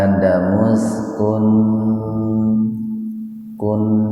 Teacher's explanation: Ya adamus kun idhar khalqi, nun mati ketemu hamzah secara terpisah, jadi dibaca jelas di tenggorokan